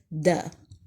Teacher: اس کی ادائیگی ہے دال، مد کے ساتھ پڑھتے ہیں، اور اس کی ساؤنڈ ہے دا۔ باریک حرف ہے اور پڑھتے ہوئے ہونٹ کی شیپ پھیل جائے گی۔